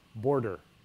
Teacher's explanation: you have a like normal syllable followed by syllabic R